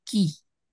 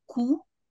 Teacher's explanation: Quand je dis par exemple qui, le cas de qui est presque et palatal, mais palatal très avancé. Alors que quand je dis cou, c'est vélaire.